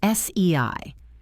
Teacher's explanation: The sound a in say is e sliding into i.